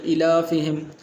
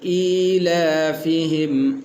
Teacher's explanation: صحیح لفظ یہ ایلافہم، حمزے کو بھی لمبا کرنا ہے، لام کو بھی لمبا کرنا ہے۔ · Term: کھڑی زیر